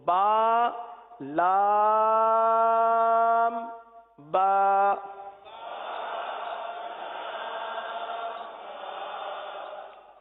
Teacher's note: با دونوں ہونٹوں کے تر حصے سے ادا ہوتا ہے.